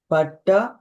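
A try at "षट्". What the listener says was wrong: షట్. అది పా కాదు, షా. షట్. పాలాగా లేదు, మధ్యలో గీత ఉంది, కనిపిస్తుంది చూడండి.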